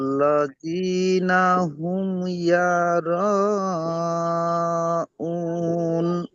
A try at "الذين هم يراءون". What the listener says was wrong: ইয়ারা নেই, তাহলে ইয়া জাবার হতো, ইয়ারা হতো। এখানে ইয়া পেশ ইউ হয়, কি হবে? ইউ, ইউর।